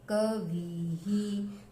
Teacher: इसमें विसर्ग की आवाज ह जैसी आ रही है और ई की भी दोनों की मिलके आ रही है